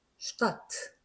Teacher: 단어 맨 앞에서 S 다음에 테나 페가 나오면 발음상 S가 쉬 발음이 난다라고 하는 거